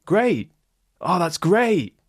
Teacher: a rise fall great that shows my enthusiasm